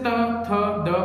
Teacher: जैसे त, थ, द बोलते हैं तो अपनी जो जीभ है, जो टंग है, वो दांतों को स्पर्श करती है, इसलिए इनको दंतेय बोलते हैं